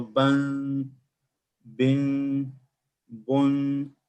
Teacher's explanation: you see the sound is coming from the nose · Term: noon nasal sound